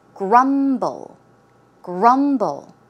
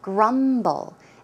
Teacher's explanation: The pronunciation is grumble, grumble. The stress goes on the first syllable.